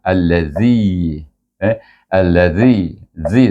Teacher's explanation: Zi itu dibaca dengan mad mad asli dua harakat